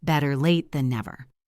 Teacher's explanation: Listen to the intonation. We usually stress late and never.